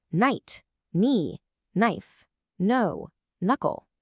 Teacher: You see a K in knife and you expect a hard stop in the back of your throat, but your mouth just ignores it entirely and jumps straight to the N sound. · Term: silent plosives